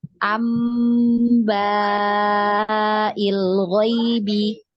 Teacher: Jadi kita tidak baca anbai ya, tidak kita baca seperti itu, tapi nunnya ini berubah menjadi mim ya, karena nun sukun tadi bertemu dengan huruf ba ya. Nah, maka dia berubah bunyi ambai ya, namanya gunnah ya, namanya di gunnah. Nah, itu berarti ditahan 2 harokat ya, ambail ghaibi ya, seperti itu.